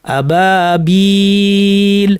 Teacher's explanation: তৃতীয় উদাহরণে ইয়া সাকিন পূর্বে জের, কাজী মাদ্দের ইয়া, আবাবির, আবাবিলা ছিল শব্দটা, আমরা থামার কারণে সুকুন দিয়ে যখন থামবো তখন এটাকে আমরা 3 আলিফ পর্যন্ত লম্বা করতে পারবো